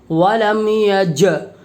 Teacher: جیم کو جزم ہے، جیم میں قلقلہ ہوگا، اس لیے کہ جیم حروف قلقلہ کے 5 حرفوں میں سے ہے، ولم یج۔